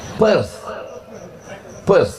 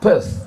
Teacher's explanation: Th di ujung itu cara membacanya T